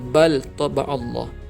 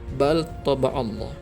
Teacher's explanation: Dan yang kedua, bal, ada kalimah bal, selepasnya ada huruf ta, maka dibaca bal taba'allah. Lam dibaca dengan izhar, jelas. Lam tu kena sebut dengan jelas